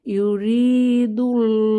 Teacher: যেহেতু আল্লাহ শব্দের আগের হরফ এর উপরে দালের উপরে পেশ আছে বা দম্মাহ আছে, এখানে আমরা মোটা আওয়াজে লামকে পড়ব। ইউরিদুল্লাহু আল্লাহ ইচ্ছা করেন।